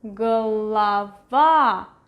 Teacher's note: stress is over here. This O is right next to the stressed vowel, so it is pronounced as A